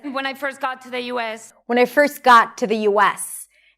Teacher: When I first got to the US. Now notice the words that she chooses to stress. Got, US.